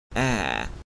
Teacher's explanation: Near open front unrounded vowel